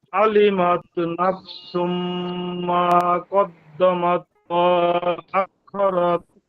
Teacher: আইনটাকে গলার মধ্যে নিয়ে উচ্চারণ করতে চেষ্টা করার কারণে একটু টান তৈরি হয়ে যাচ্ছে। এটুকু হবে না, প্রয়োজনে স্বাভাবিক পড়েন, আইন ভালোভাবে উচ্চারণ না হলেও টান দেওয়া যাবে না।